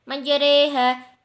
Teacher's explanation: mencondongkan harokat fathah mendekati kepada ya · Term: imalah